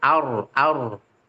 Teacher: a-nya tipis rnya tebal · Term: ro sukun